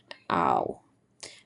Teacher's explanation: when we create the sound, our lips move from open to slightly parted and round